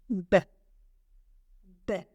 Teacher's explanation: I feel a little bit of air, but it's not an explosion. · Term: letter B